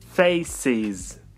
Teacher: Слово «face» заканчивается на звук «с». Значит, нам нужно произнести «is».